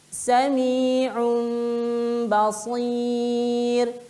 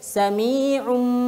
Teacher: Kita tidak boleh menekan huruf tanwin masuk ke ba. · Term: iklab